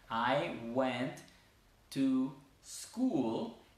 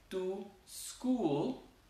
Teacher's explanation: mover el sonido de esa S no al principio de la palabra, sino al final de la palabra anterior. Entonces yo digo, fui al colegio, I went to school, en vez de decir to school, que a veces es difícil iniciar la palabra con S.